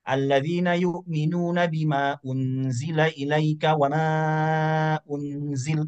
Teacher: Pertama dia baca mad jaiznya 2. Yang kedua dia baca mad jaiznya 4.